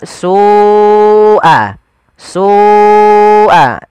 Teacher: Sual adzab ada lafal su ada mad wajib muttasil yaitu lafal su wajib kita panjangkan sepanjang empat atau lima harakat